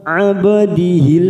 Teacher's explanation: ada huruf ba sukun, namanya qalqalah sugro, kita pantulkan